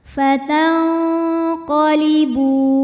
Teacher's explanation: ada hukum ikhfa ab'ad karena nun sukun menghadapi huruf q maka Nun dibunyikan samar-samar siap-siap ke qf disertai dengung dengungnya besar